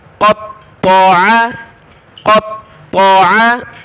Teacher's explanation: قاف کو بڑی طا کے ساتھ ملایا